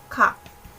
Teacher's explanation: May konting, or aspirated lang siya. May konting hangin ka lang na ilalabas. Konti lang.